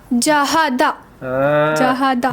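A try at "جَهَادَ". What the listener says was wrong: जहादा जहादा जहादा। खींचना है, जहां खींचने बोलो वहां खींचते नहीं, जहां रुकने बोलो वहां रुकते नहीं।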